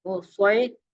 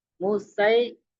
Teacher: یہاں پر اس پہلے میں یب سوتو بس تو سواد اور سین میں فرق ہے، سواد کو موٹا پڑھا جاتا ہے، سین کو باریک پڑھا جاتا ہے، اور ساؤنڈ کے اندر بھی فرق آتا ہے.